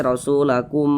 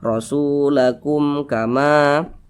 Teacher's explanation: seperti itu jangan ditahan seperti ini rasulakum jangan ditahan seperti itu salah jangan didengungkan pendek saja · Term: izhar syafawi